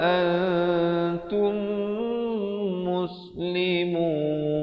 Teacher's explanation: mim mati bertemu mim, hukumnya idgham mislain saghir, dibacakan dengan dengung 2 harakat